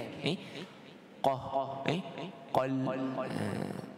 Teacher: Cuba jangan, cuma qafnya tu jangan terlampau ditebalkan. Jadi qul, dia memang tebal tapi hanya dekat atas daripada kerongkong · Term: huruf qaf